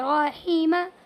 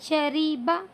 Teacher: کیونکہ یہاں پر زیر ہے اور یہاں پر زبر ہے. جب را کے اوپر زبر ہو تو را کو پر پڑھتے ہیں